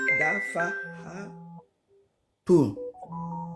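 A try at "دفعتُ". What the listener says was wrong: Dafa'atu. Mais on n'entend pas à la fin. Dafa'atu.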